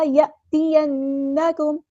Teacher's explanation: الف مد آ گیا تو مد اصلی کریں گے، فَإِمَّا يَأْتِيَنَّكُمْ، الف پر جزم ہے، سکون ہے تو جھٹکا دے کر پڑھیں گے